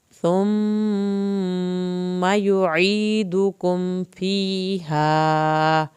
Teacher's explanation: میم کی شد پہ ایک الف کے برابر دیر لگائیں گے، میم کی زبر کو لمبا نہیں کرنا